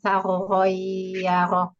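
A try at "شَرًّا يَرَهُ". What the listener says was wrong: Nah, sya-nya bukan sa yang digigit, tapi sya. Syaroi yaroh sya.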